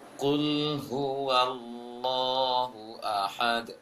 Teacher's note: lama menahan tasydid Allah, lama menahan tasydid sad, lama menahan tasydid pada lam sama semuanya. Allahu, qul huwallahu ahad, harus jelas tasydidnya.